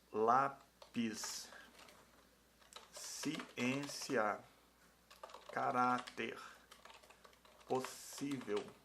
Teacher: a penúltima é a mais forte né penúltimo é mais forte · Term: paroxítonas